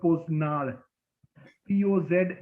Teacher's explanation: No, it's not retroflex. It is what's called velarized. It's basically a dropping of the back of the tongue, not raising of the front.